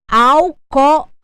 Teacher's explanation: cinco sílabas eu só posso acentuar até a anti penúltima alcoólico o meu assento será no segundo o da palavra o meu au se transformou numa subtônica ele não é mais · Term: acento tônico